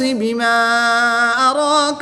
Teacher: الف مدہ کے بعد حمزہ دوسرے کلمے میں ہے تو یہاں پر مد منفصل ہوگی، 2 سے 3 الف تک کھینچ کر پڑھیں گے۔